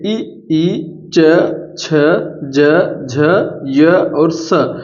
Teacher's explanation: इन सबको एक ही स्थान से बोल रहे हैं और वो कहां से बोल रहे हैं तालू से